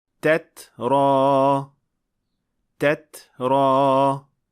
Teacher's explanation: >> Lekin hammasini ortiqcha kuchaytirish kerak emas. Chunki bunday holatda tadan keyin sga o'xshash tovish chiqib qoladi.